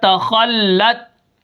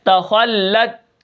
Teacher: تا کے اوپر زبر ہے تو ہم اس کو بالکل نہیں کھینچیں گے، اور اس کے بعد خا کو ہم موٹا کریں گے اور لام کے ساتھ ملا کر پڑھیں گے، اور لام کو تا کے ساتھ اس لیے ملا کے پڑھیں گے کیونکہ تا کے اوپر کیا ہے، جزم ہے، ٹھیک ہے۔